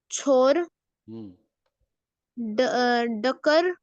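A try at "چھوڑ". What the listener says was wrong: डका नहीं, छोर हो गया ना, छू नहीं है वो, छोर है, यानी कि लीव करना, ओमिट करना, छोड़ देना, तर्क करना, सब कुछ छोड़। रा नहीं है, रा है, रा रा, ये वाली रा नहीं है।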